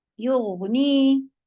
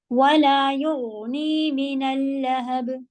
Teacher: یغنی غین کی آواز میں جہر آواز ہوتی ہے اور رخاوہ ہوتا ہے